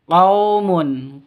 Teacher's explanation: La panjang 2 ketukan, yaskhar pendek, dibaca pendek. Qaumun, qaw sifat lin, lentur, lemes, tidak boleh disentak, tidak boleh dipanjangkan.